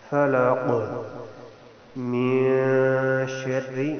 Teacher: یہاں پر اخفا یعنی آواز کو ناک میں لے جانا ہے، نون کی آواز غائب ہو جائے گی